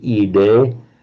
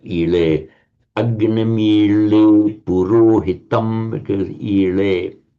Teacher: So that is just the phenomenon of a d between vowels becomes a l